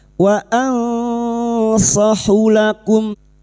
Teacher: nun sukun bertemu sad ikfa hakiki, kita samarkan bunyi nun sukun dan mendengung selama 3 harokat